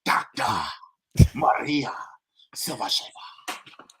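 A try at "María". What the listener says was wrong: We gotta roll those R's on that Maria? Maria.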